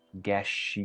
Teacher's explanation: Entre la palabra guess y she está sucediendo algo que se conoce como assimilation. Aquí, en vez de pronunciar este ejemplo como guess she, simplemente vamos a hacer un sonido de SH un poco más largo.